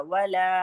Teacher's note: वाव को हम नहीं खींचेंगे लेकिन ल खींचेगा।